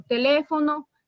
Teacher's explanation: palabras esdrújulas cuya sílaba tónica es decir la que se pronuncia con más énfasis en la antepenúltima